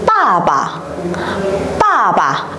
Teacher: mình sẽ dồn trọng âm vào âm tiết đằng trước và đọc lơi cái âm đằng sau ra nhá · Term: thanh nhẹ